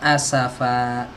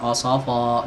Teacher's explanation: langsung masuk ke asafa, bukan osofa, jangan tebel.